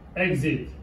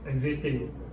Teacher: Exit, l'accent est sur le E.